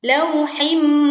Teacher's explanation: leburkan kasroh tanwin ke mim sehingga dengungnya dibaca dengan sempurna, tidak tergesa-gesa